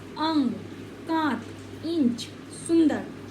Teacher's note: ये बिंदी स्वरों के साथ आती है और नासक्य यानी नाक वाला से उच्चारण देती है। यथा अंग, जब हम अनुस्वार बोलते हैं तो हमारा जो उच्चारण होता है वो कहाँ से आता है? नाक से आता है।